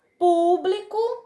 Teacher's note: público vai ser uma proparoxítona porque a sílaba tônica dela vai ser a antepenúltima